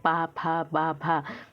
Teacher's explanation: ओष्ठ व्यंजन, तो ये हम ओठों से बोलते हैं